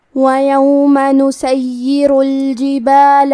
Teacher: کلمت نسیر میں حرف الیا پہ تشدید ہے، لہذا ہمیں یا کو 2 حرف کے برابر پڑھنا ہے کیونکہ تشدید کی اصلیت 2 حرف ہے.